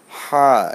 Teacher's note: এটা অনেক ভিতর থেকে আসছে, গলার মাঝখান থেকে